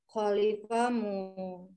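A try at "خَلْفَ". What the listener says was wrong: Jangan khalif ya, khalfa. Enggak, lamnya sukun, khal.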